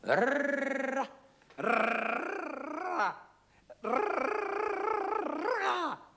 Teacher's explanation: en portant le bout de la langue jusqu'au haut du palais, de sorte qu'étant frôlée par l'air qui sort avec force, elle lui cède et revient toujours au même endroit, faisant une manière de tremblement. Rrrra, rrrra, rrrra.